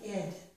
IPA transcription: ɪd